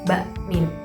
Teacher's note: Nah huruf yang keluar dari 2 bibir, yaitu seperti huruf ba dengan mim. Nah itu keluarnya dengan menyatukan antara 2 bibir itu keluar huruf ba dengan mim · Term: syafatain, 2 bibir